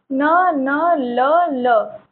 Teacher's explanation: आपकी जबान हल्की सी पलट रही है ऊपर तलवे पे लग के तो ये आपका वत्स हो जाएगा।